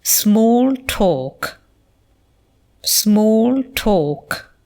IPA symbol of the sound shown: ɔ: